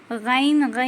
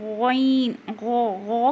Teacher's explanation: गौइन को हम मोटा पढ़ेंगे, हुरूफ मुस्तालिया में से है, थोड़ी सी खुरदुरी आवाज़ आना है